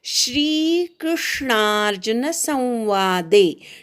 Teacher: श्री दीर्घ वेलांटी आहे, त्यामुळे दीर्घ उच्चार ऐकू येऊ दे. क्रूवर आघात घ्यायचा.